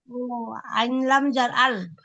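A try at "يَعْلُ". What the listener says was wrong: না, আইন জবর আ, লাম পেশ লু, ইয়া যা আলু, ইয়া যা আলু।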